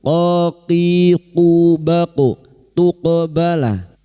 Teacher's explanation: huruf qaf sukun yang mati asli di tengah kalimat qalqalah sugra. Jangan lupa dipantulkan